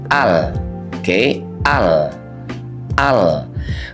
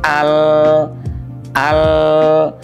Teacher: huruf lam itu keluarnya dari ujung lidah kita. Oke, ini ujung lidahnya di sini, ya.